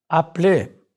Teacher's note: Note how the E instable is not pronounced.